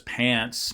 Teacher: so long it's about a quarter of a second long uh kind of starts out not so nasalized and then becomes more nasalized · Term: nasalization